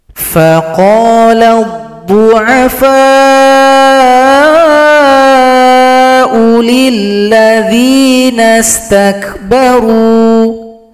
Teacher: Huruf U dibaca pendek karena dammah bertemu dengan alif.